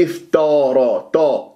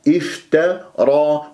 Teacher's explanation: قطع. التاء مرققة، الراء مفخمة، افترى تاء، ما تقول افتارا تا، لا تفخم التاء لمجاورتها للراء المفخم مفتوح ، فهذه من الأخطاء، ما تقول افتا، لا افتا تا تا